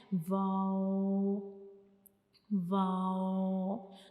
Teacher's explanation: कि वाव को हम पढ़ते हुए हमारे जो दोनों होठ हैं वो आपस में एक सर्कल बनाते हैं। आपस में मिले बगैर।